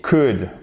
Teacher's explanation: On ne prononce pas le L.